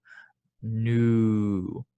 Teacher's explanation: make sure you have rounded lips, like an oo, nu